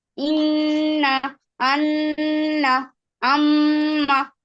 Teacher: নাকের বাঁশি হতে গুন্না উচ্চারিত হয় 17 নম্বর মাখরাজ।